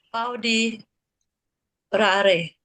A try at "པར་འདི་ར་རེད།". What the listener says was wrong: That's it.